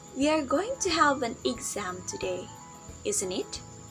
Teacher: we use raising intonation when we are not sure about something and we want a confirmation from our listener